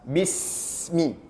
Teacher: Jadi aliran huruf sin ini harus sampai kepada mim. Bismi. Tidak boleh terputus. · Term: Sin sukun, sin sukun